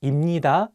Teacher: So if you pair 비읍 with 니은, you can pronounce 비읍 as 미음. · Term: nasal consonant sounds